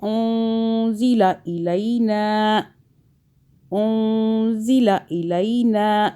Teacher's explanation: اخفا کا قاعدہ یعنی کہ نون کو چھپائیں گے، زبان تالو سے ٹچ نہیں کریں گے